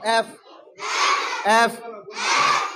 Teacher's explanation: দুই পাটি দাঁত আছে। এই উপরের পাটির দাঁত নিচের ঠোঁটের সাথে মিলবে।